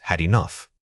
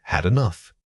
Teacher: The ed ending on had often reduces to a weak syllable that links directly into enough. Think of it as almost disappearing, but providing just enough air pressure to signal the connection.